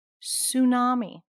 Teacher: Even though there's a T there, we do not pronounce the T sound. The T is silent.